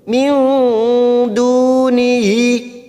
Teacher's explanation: Nun sukun bertemu dal, ikhfa hakiki, kita samarkan 3 ketuk.